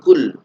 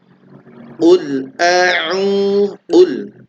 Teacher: Maka qaf ini dia punya sifat isti'ala, yaitu ditebalkan. Qul, bukan kul, ya, beda antara qaf dan kaf.